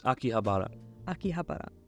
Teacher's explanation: In Japan, you don't put an accent on a certain syllable, so give them all the same weight.